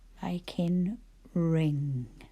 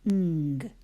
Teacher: my tongue is right at the back of my mouth, I know that I will need an N, and a G.